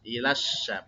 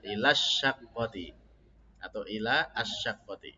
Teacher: Ilassa itu ujungnya lidah, tapi kita di tengah lidah ya · Shin Pak, syaqqah ya, untuk syaqqah menggunakan shin. Jadi shin itu tempat keluarnya huruf itu dari tengah lidah. Dan dia itu punya sifat tafasyi, jadi menyebar suaranya. Jadi ilasya, bukan ilassa.